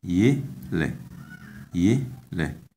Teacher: The tone is on the first syllable